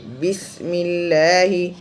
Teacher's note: بسم اللہ، ملہ ہونٹوں کو پھیلا کر پڑھنا چاہیے۔ بسم اللہ، دانتوں کو چپکا کر سیٹی کی آواز آنا چاہیے